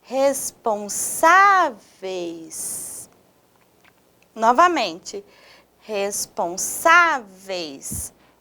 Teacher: a Sá é a sílaba mais forte dessa palavra